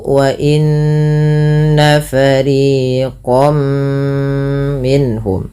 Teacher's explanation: Nah, maka apabila ada nun sukun atau tanwin bertemu dengan 4 huruf ini, cara membacanya yang pertama, masukkan tanwinnya ke huruf setelahnya. Kalau huruf setelahnya mim, maka masukkan tanwinnya, bunyi nunnya mengganti dengan bunyi mim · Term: idgham bi gunnah